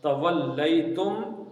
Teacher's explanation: لئی جو ہے یہ حرف لین ہے, لئی حرکتیں اس کی دو. تولیتم فما, فا ایک حرکت ہے, ما جو ہے یہ دو حرکتیں ہیں, میم زبر الف ما.